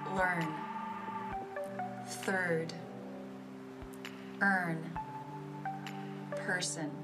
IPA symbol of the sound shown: ɜ